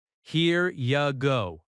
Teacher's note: In natural American speech, this often sounds like here you go. The word you reduces to ya.